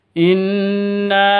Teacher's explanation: Nun tasydidnya berdiri sendiri. Artinya ini dengung dua ketukan. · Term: Gunnah musyaddadah